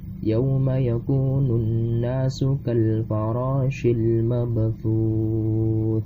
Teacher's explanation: ta mabthuth ini dibaca sebagai mad arif lis sukun. Bisa 2 harokat, bisa 4 harokat, dan bisa 6 harokat.